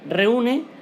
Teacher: Lo mismo pasa con la palabra reúne, vemos que en esta U hay una ligera fuerza de voz y por tanto se separa la vocal abierta E de la cerrada U y se separan sílabas y forma el hiato.